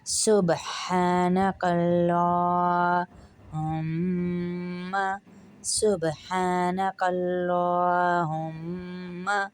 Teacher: کاف کو پتلا پڑھیں گے لیکن اللہ کے لام کو پھر موٹا پڑھیں گے، اور الف ہا کو کھینچیں گے ایک الف کے برابر۔